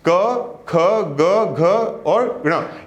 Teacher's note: ये जो आपका साउंड है ये कहां से निकल रहा है, कंठ से निकल रहा है। तो ये जो क वर्ग है इसको हम बोलते हैं कि ये हमारा क्या है, ये कंठ्य है। · ये कंठ्य वर्ण होते हैं, क्योंकि इनका उच्चारण कहां से होता है, कंठ से होता है।